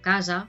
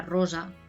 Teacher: esta S entre dos vocales lo que se hace es que se convierta en sonora, que se suavice, ¿no? Que tenga lo que decíamos antes, el sonido de la Z, de la Z.